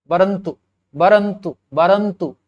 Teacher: अ जो है थोड़ा सा हल्का साउंड है, उदासीन है, बहुत अपना इंपैक्ट नहीं डालता, इसलिए वो उदासीन स्वर है।